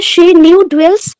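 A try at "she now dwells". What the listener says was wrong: নিউ কি গো? She now. She now ডুয়েলস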